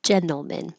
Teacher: we don't say this T in gentlemen because it's after the N and your tongue's already going to the in position